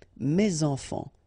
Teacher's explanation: So it goes like that, and then ending with S, enfants, children is starting with a vowel, so you should make the liaison